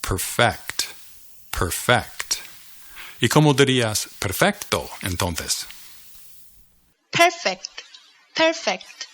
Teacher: notice that the emphasis is on the second syllable